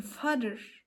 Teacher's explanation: High vowels like e and u are produced with the tongue raised high in the mouth while low vowels like a in father are produced with the tongue positioned lower